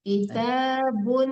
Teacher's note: unnya itu dengung Bu, nama hukumnya ikhfa hakiki, jadi didengungkan di situnya.